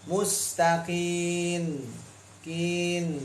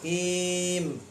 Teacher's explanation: Lidah nempel duluan. Ada bunyi nun. Mustaqin. Kin. Jadi nun duluan nyampai. Langsung bibir. Kim. Jangan kin.